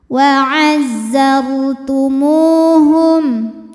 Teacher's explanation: Mu dihukumi mad tabi'i zahiri sebab waw sukun didahului baris dhammah, maka huruf mim panjang 2 harokat · mim panjang dua harakat waazartumuhum Hum dihukumi dengan zhar syafawi karena mim sukun menghadapi huruf selain mim dan ba yaitu huruf wau maka mim dibaca dengan jelas